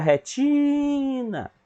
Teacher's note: Então, ti é a sílaba tônica